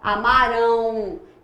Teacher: o M e o N, nesse caso, não são consoantes, porque a consoante tem que sair algum som. Aqui só é nasal. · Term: ditongo não grafado